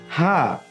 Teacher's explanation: হা উচ্চারণের সময় গলার মাঝখান থেকে শ্বাস বের হবে